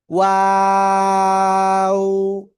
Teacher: দুই ঠোঁট। দুই ঠোঁট গোল করিয়া উচ্চারণ করতে হবে। শুরুতে গোল হবে, মাঝখানে দুই দিকে প্রসারিত হবে, শেষে এসে আবার গোল হবে। ওয়াও। তিন আলিফ টান হবে।